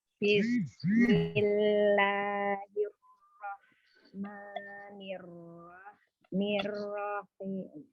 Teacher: untuk bacaan Bismillah ya, basmalah ya, ada huruf sin itu memiliki sifat as-shafir, ada desisnya